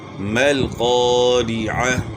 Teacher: را کی زیر جو ہے نا پڑی زیر ہے تو اس کو جو ہے نا اپنے کھینچنا بھی نہیں اور مجہول بھی نہیں پڑھنا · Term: معروف طریقے